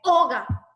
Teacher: la carga de la voz lo lleva en la O, no en la A.